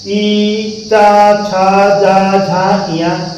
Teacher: इया नासिका से भी बोला जाता है और इया को हम लोग तालु से भी बोलते हैं। तो इया नासिका और तालु दोनों जगह से बोला जाता है।